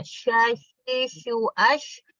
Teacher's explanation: Sya itu dia tafashi, harus menyebar suaranya.